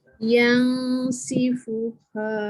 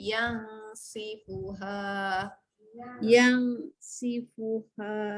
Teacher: Dengung, dengung tu kena panjang, lepas tu parking lidah betul. Untuk huruf sin dekat mana? Hujung lidah gusi bawah juga.